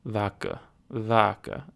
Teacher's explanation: it's nasal vodka vodka okay so it looks like the um emphasis might be in the first syllable of the word